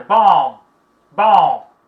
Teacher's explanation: Mas eu vejo muitas pessoas pronunciar bomb, mas o B não é pronunciado